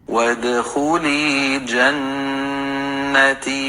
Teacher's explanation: اور یا ساکن سے پہلے تا کے نیچے زیر کی حرکت، یا مد کا رول ہوگا اور اس کو ہم 2 کاؤنٹس کے برابر لمبا پڑھیں گے